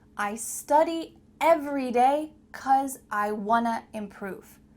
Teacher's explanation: Here the words want to become reduced to wanna.